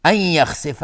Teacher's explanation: نون ساکن بهش یا ادغام با غنه. خا از حروف استعلاست لفظ جلاله مفخم است چون قبلش فتحه اومده.